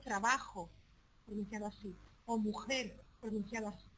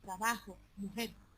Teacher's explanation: pero en Andalucía occidental se pronuncia con un sonido aspirado